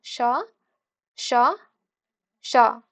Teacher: ऊष्म व्यंजन है, ठीक है, जिनका उच्चारण एक प्रकार की रगड़ से उत्पन्न ऊष्म गर्म वायु से होता है। ठीक है, जैसे हम लोग बोलते हैं ना तालव्य श, तो उसमें देखिएगा जो वायु है उसमें फ्रिक्शन होता है